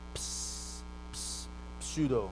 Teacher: So when you say it, right, you have the p, p, right? You have the unvoiced labial, p, p, and the s, alveolar, ps, ps, pseudo.